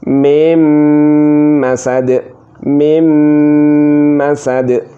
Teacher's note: ini nun sukun harus dimasukkan ke mim, maka dibaca mim masad, mim masad. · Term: idgham bi gunnah